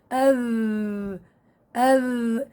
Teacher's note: طبعا صفات حرف الذال بداية الجهر. نتيجة خروج حرف الذال بصير عندي تضام للوترين الصوتيين واهتزازهما